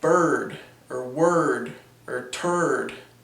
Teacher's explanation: It's basically a type of vowel. The tongue basically kind of retracts and goes up towards more of the back of the mouth. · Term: American R